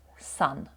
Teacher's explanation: буква ю дуже часто в такому закритому складі буде поводитися як коротке а